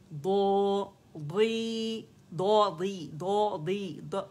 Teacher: موٹا دال نہیں پڑھیں گے, ضاد کے مخرج پہ جائیں گے جو موٹے کنارے ہیں